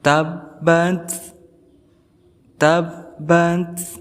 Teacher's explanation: Huruf ta ini termasuk huruf hamas. Dia disifati dengan hamas, berarti ada nafas yang keluar ataupun angin yang keluar. Tabbat, tabbat, tapi sedikit, tidak boleh seperti ini, tabbat.